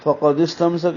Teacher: فقد استمسک میں قاف کو موٹا پڑھیں گے